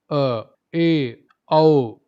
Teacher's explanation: अर्ध विवृत, उच्चारण में मुख आधा खुलता है।